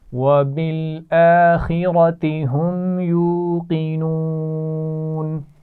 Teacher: اور قاف کو موٹا پڑھا جائے گا · وبالآخرة، ٹھیک ہے، حمزہ پر کھڑا زبر ہے، تھوڑا سا کھینچ کر پڑھیں گے. خا اور را دونوں کو موٹا پڑھا جائے گا